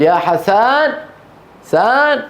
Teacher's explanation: في الشام يقولون يا حسن يضغطون على فتحه السين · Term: الضغط